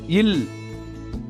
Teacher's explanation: மேல்வாய் பல்லின் அடியை நாக்கின் ஓரங்கள் தடித்து நெருங்குவதால் பிறக்கிறது இல் இந்த மெய்யெழுத்து மேல்வாயை நாக்கின் ஓரங்கள் தடித்து தடவுவதால் பிறக்கிறது இவ் இந்த